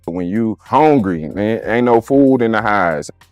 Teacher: The first component is the H-Town draw. Vowels are drawn out and elongated.